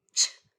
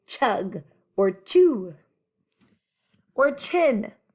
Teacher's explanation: your mouth does almost the same thing as it does for the sh except ch is a stopper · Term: stopper sound